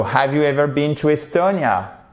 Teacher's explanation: C'est une yes, no question. Donc, il faut remonter l'intonation sur la fin.